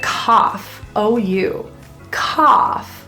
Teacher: The word cough, O-U, cough, has an open ah sound